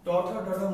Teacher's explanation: দাঁতের গোড়ার পিছন, দাঁতের যে আমাদের গোড়া বা মূল মাড়ি আছে তার পিছন থেকে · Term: পশ্চাৎ দন্তমূলীয়